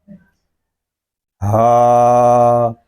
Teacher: ہا، یہ حلق کے نیچے والے حصے سے ادا ہوگا